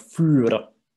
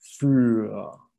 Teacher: And with a für, of course, remember the beautiful vocalized R.